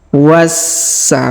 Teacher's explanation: di sini kita baca was perhatikan huruf wa langsung kita sambung huruf sa yang berharakat tasdid kita tahan dan kita tekan